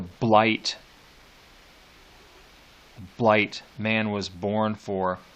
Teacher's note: The plosive of blight, and then the hard T at the end, and then the I, that long I sound there